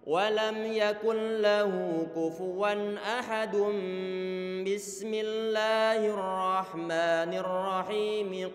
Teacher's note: suara tanwin ataupun nun sukun diganti dengan suara huruf mim di saat bertemu dengan huruf ba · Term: iqlab